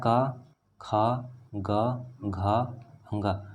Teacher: तो इसमें जो दूसरा और चौथा यानी ख और घ जो है ये आपके महाप्राण वर्ण होते हैं। अल्पप्राण आपके 1, 2 और ये वाले होते हैं।